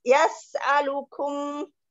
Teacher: Yas'alukum sinya ada desis sama ada hamas